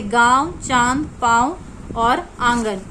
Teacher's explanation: अनुनासिक, इसका उच्चारण नाक और गले दोनों से होता है।